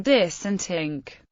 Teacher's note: speakers have no dental fricatives and English cognate words are usually pronounced with d or t